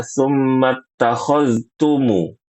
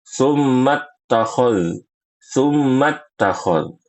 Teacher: huruf zal yang sukun dibaca jelas, ya, baru baca huruf ta · huruf zalnya diidghamkan secara sempurna ke huruf ta